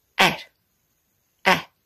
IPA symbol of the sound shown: æ